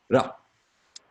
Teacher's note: the R is a flick of the tongue off of the cliff behind the ridge behind your teeth. So rather than an sound, it's a ra.